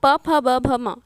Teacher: ओष्ठव्य ध्वनि मतलब जिसके उच्चारण से होंठ टकराते हों